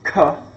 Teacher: you go ka, and you can feel that breath on your hand. This is aspiration.